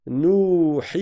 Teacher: J'ai une première voyelle courte suivie de sa prolongation, une deuxième voyelle courte, le ha, la kasra du ha, suivie de sa prolongation, une troisième voyelle courte qui est la fatha du ha, suivie de sa prolongation. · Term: les 6 temps